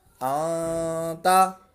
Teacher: حمزہ نون زبر آن، یہ نون ساکن کے بعد تا حروف اکفا میں سے ہے، تو یہاں پر ہم غنہ کریں گے۔ حمزہ نون زبر آن، تا زبر تا، آنتا۔